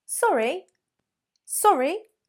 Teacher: the intonation needs to be a little bit more specific. You want a down-up intonation.